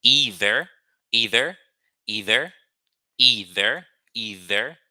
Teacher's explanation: Which is a th sound. It's an interdental sound. You put your tongue between your teeth and you put the sound out.